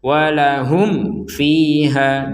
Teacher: mim sukun bertemu fa, kita harus menjelaskannya. Walahum fiha, jangan dibaca dengung.